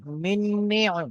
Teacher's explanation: এখানে যে মিমটি আছে এই মিমটি এই নুনের সঙ্গে যুক্ত হবে।